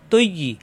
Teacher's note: কাসিরন, তজাবর তোয়া, তা হবে না, তমেল বিয়ের সাথে তৈ, ইয়ায় তাজদিদ দুইবার, প্রথম তমেল বি ইয়ার সাথে তৈ, পরের ইয়ে আছে জের ই, তৈ ই, ত জিব্বার আগা উপরে দাঁতের গোড়ায় লাগিয়ে, আর ইয়া জিব্বার মাঝখান উপরে তালুতে সব দিয়ে